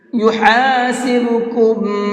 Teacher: ہا کو حلق سے نکال کر کے پڑھیں گے